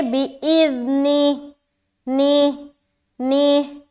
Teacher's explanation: نی جو بولیں گے ہا پورا ادا ہونا چاہیے صحیح طریقے سے. بعض اوقات لوگ ہا کو چھوڑ دیتے، بِإِذْنِهِ پڑھتے، بِإِذْنِهِ، ہا نکلتا ہی نہیں.